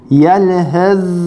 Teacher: S okumuyoruz, zel okuyoruz. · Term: idgam mütecanisein